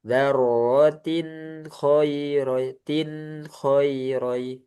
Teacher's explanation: Jadi ada aliran sedikit di nun.